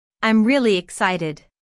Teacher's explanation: Notice the emphasis on really.